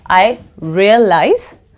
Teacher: se is pronounced as ze